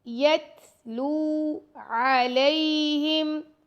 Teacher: لام کے ساتھ واو مدہ ہے تو واو کو 2 سیکنڈ تک لمبا کر کے پڑھیں گے